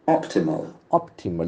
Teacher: The accent falls from the first syllable.